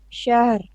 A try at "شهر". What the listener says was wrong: you have to practice this. It's not shahar.